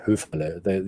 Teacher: So the R is actually audible. But up north, they would probably call it Höfele. You wouldn't hear the R.